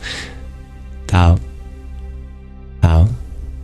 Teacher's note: It's in between a t and a d. The problem is that in English, we don't have a letter that's in between. · But the truth is, the way of pronunciation is something in between. It's not quite voiceless and it's not quite voiced.